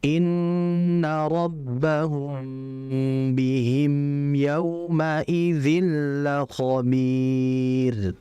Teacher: Innabbahum itu semuanya ada ghunah. ditahan.